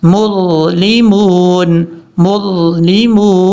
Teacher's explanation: میم کے بعد جو ضا ہے یہ ضا حروف مستعلیہ میں سے ہے، پر پڑھا جائے گا